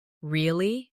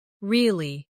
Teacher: Say, Really? with a rising tone to show surprise. Now say, Really. with a falling tone to show you don't believe someone. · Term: intonation